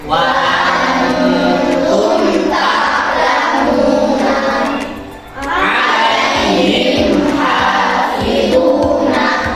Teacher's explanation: jelas bunyi mim sukunnya dengan bibir tertutup tanpa disertai dengung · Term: idhar syafawi